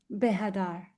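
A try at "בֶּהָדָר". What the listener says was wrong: Behadar, that was too short.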